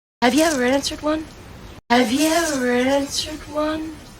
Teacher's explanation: Vas a escuchar que ahora el verbo no va a ser pronunciado como answered. No van a pronunciar la d al final, sino simplemente como si el verbo estuviera en presente.